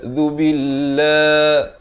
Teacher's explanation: Di hujung lidah. Zu billah, la itu dibacakan nipis.